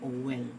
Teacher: the insertion of the sound of the W, which is a distinct consonant sound, is also a fault. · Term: intrusion